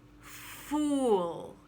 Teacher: It's round oo, fool. And it can be one short syllable, fool, or a little longer, fool.